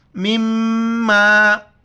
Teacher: میم پر جہاں بھی شد ہے وہاں پر غنہ کریں گے، ناک میں آواز چھپائیں گے، ساؤنڈ ان نوز۔